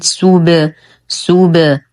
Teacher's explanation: نتم ضمة السين، نقلقل الباء بالرجوع عن الضم فنقول سوب. ومن الأخطاء الشائعة أن يقال سوبو وهذا خطأ.